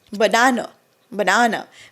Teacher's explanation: आ नाही अ sound येतो बनाना हा श्वा साऊंड म्हणतात त्याला पहिला ए आहे तो श्व साऊंड आहे मधला ए हा स्ट्रॉंग आहे आ आणि शेवटचा ए परत श्व आहे